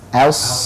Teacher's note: Rabbuka bi as. A-nya tipis, shadnya tebal